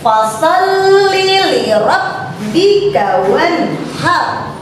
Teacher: Fa itu terdapat di makhraj asy-syafatain ya, itu di antara dua bibir.